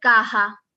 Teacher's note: america but this also happens in southern parts of spain when the s becomes more like an h sound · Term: s reduction